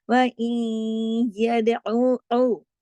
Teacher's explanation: आइन को गले से पढ़ा जाएगा